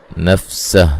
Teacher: नफ़्सह सीन को बारीक सीटी से अदा करेंगे।